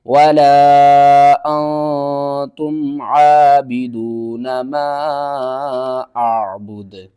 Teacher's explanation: وقف کی صورت میں دال کو ساکن کریں گے اور دال کے اوپر قلقلہ بھی کریں گے